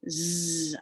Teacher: i notice my tongue and i notice it vibrates and it tickles